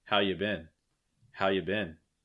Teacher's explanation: How have you been? You may even hear this reduced even further, taking off the have. Just how you been, how you been.